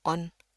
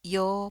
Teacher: Jadi bedanya yang sebelah depan pendek, on. Di sini yo panjang.